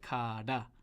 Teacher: sort of a tap of the tongue on the top of the mouth